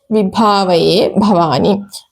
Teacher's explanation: മഹാപ്രാണയാണ് ഭ അവിടെ ഉറച്ചുതന്നെ ഉച്ചരിക്കണം